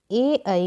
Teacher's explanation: ए ऐ का उच्चारण स्थान कंठ और तालु होता है और इन वर्णों को कंठ तालव्य कहा जाता है।